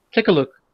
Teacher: It's a very short K sound. We don't want to elongate the K because we don't really do that in English unless we're like doing something, acting, for example.